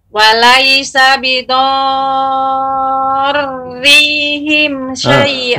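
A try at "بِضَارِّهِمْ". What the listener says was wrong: Rinya ditekan namun bukan berarti dipanjangkan, bukan rihim namun bidarrihim. Ketika masuk ra, ya.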